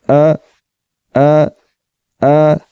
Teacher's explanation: حلق کے نیچے والے حصے سے آواز کو نکالتے ہوئے اس کو پڑھیں گے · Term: حمزہ